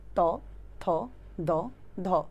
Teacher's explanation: এগুলি হচ্ছে তোমার একদম জিভের ডগাটা দাঁতে গিয়ে লাগতেছে, তার মানে এদেরকে দন্ত ব্যঞ্জন।